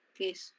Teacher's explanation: no está sonando la u por eso solo Suena la k queso no suena la u suena como K